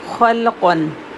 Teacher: خو بھی ہیوی اور قوف بھی ہیوی، اور لام سینٹر میں ہے، یہ سافٹ ہے اور لام کو سکون سے پڑھیں گے